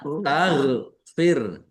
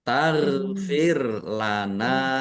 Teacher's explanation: Gin sukun bukan qalqalah. Jangan dipantulkan ya.